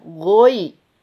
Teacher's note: Hati-hati, kalau tidak ditipiskan ya-nya, maka dia menjadi goe.